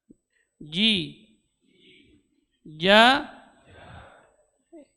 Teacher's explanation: huruf ja keluar dari tengah-tengah lidah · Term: huruf jim